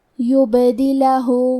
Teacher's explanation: کلمت یبدلہ میں با پہ جزم ہے اور با بھی حروف القلقلہ میں سے ہے، لہذا ہمیں حرف البا کو قلقلہ سے پڑھنا ہے۔ یبدلہ، لام پہ زبر ہے تو ہم زبر کو ظاہر کریں گے، آخری میں ہاں پہ الٹا پیش ہے اور اس پہ مد کا علامہ ہے، یہ بھی مد صلہ کبریٰ ہے، تو ہم اپنی آواز 2 سے 4 مد کے برابر لمبی کریں گے۔